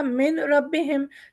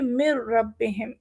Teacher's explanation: جیسے انہوں نے کہا ہے مر ربہم، ٹھیک ہے نا، جب میم نون ہمیں پڑھنا کیا چاہیے تھا من ربہم، لیکن کیونکہ را کے اوپر تشدید اور بیچ میں نون آیا ہے تو ہم اس نون کو یہاں پر، کیونکہ را اور لام کے بارے میں کہا ہے کہ یہاں پر ادغام بغیر غنہ کے ہوگا